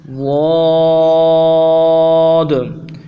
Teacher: منہ کے دونوں سائڈ جہاں پہ دانت ہیں، ان سائڈوں پہ زبان کو لگائیں گے، یہ ضاد ادا ہوگا۔ اگر دونوں سائڈوں پہ لگانا مشکل ہو تو پھر یا پھر دائیں طرف لگائیں گے یا بائیں طرف، دونوں میں سے جہاں بھی سہولت کے ساتھ زبان کو لگیں گے۔ · ایک الف کی مقدار میں اس حرف کو کھینچنا ہے اور آخر میں دال ہے، قلقلہ کریں گے۔ ضاد، اس حرف کو ادا کرنے کے لیے جو مخرج ہے اس حرف کا، فرماتے ہیں کہ زبان کو دونوں سائڈوں پہ لگانا ہے۔